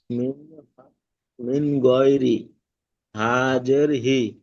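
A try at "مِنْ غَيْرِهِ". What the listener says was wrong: হা জের নই, খাড়া জের। খাড়া জের, জাবার জের, এগুলো গুইলে দিলে হি। এখানে পড়াটি রয়েছে মিন গয়রিহি, মিম নুন জের মিন, গইন ইয়া জাবার গয়। গইন ইয়া জাবার গয়, র জের রি, গয় রি, হা খাড়া জের হি, মিন গয়রিহি ইজরা।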